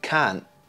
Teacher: There's a sudden stop, and that's called a glottal stop. A glottal stop is a common feature of elision, but it's not always there. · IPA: /kɑːnʔ/